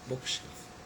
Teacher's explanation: In bookshelf, it is book which is stressed.